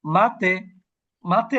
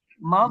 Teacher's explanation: এই অক্ষরগুলো যখন আমরা কলকলা করবো তখন সাউন্ডটা উপরের দিকে যাবে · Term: হাই সাউন্ডিং লেটার